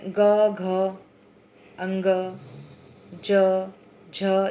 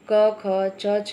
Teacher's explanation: तो जब उन स्वर तंत्रियों से हवा टकराते हुए निकलती है तो सघोष ध्वनियाँ होती हैं, और जब नहीं टकराते हुए निकलती हैं, किनारे से निकल जाती हैं, तो अघोष ध्वनियाँ होती हैं। इसमें जैसे है ग, घ, अंग, ज, झ, यह जो वर्ण है यह सघोष में है आते हैं, और अघोष में क, ख, च, छ यानी प्रत्येक वर्ग का पहला और दूसरा वर्ण, यह अघोष ध्वनियाँ हैं।